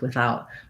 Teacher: Often in words like within and without, I still say it voiceless without, but a lot of people will use the voiced one with within and without.